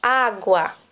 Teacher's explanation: O U é semivogal, porque o som dele é mais fraco.